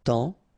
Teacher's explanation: it's only the nasal here that you will hear, temps, okay, because the P is not pronounced and the S is not pronounced.